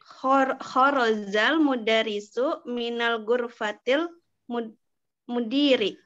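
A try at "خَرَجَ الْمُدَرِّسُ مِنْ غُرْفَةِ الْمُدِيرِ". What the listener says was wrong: Di sini bukan minal ya, min ghurfatil mudiri. Min ghurfatil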